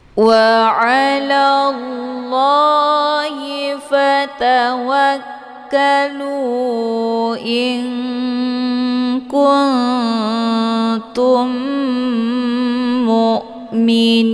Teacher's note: Cara bacanya, nun sukunnya disamarkan kemudian siap-siap menuju ke huruf kaf. Dibacanya sambil didengungkan. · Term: ikhfa ab'ad